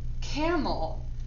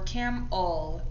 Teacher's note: notice how the e stole that schwa sound and it said uh